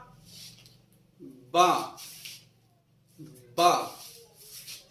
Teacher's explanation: इसको अदा करेंगे दोनों होठों के तर हिस्से से · बा का मखरज है दोनों होठों का तर हिस्सा, यानी जो दांतों के करीब होता है वो तर हिस्सा, वो नहीं जो हमको सामने से नजर आता है, बल्कि जो दांतों के करीब है और हमको नजर नहीं आता, ना ही सामने वाले को नजर आता है।